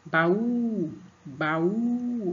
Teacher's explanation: Então, o U é a sílaba mais forte que você pronuncia com mais força, né?